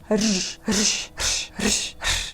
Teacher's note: Described as a post-alveolar trill with considerable friction, you simultaneously roll your tongue and produce a fricative.